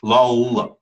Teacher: your tongue touches and then drops and then goes back up to touch again